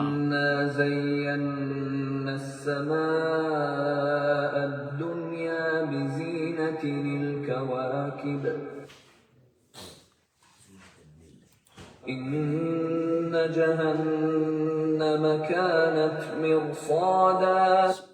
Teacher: So there is a proper pronunciation, and if you pay attention on this ayat, number 37:6, it has the word inna and zayyanna. The noon has a tasdeed in both cases. So its sound should come out with some gunna.